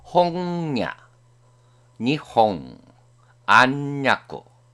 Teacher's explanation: 아, 화, 하, 야, 와행 앞이나 끝에 올 때 니은과 이응의 중간음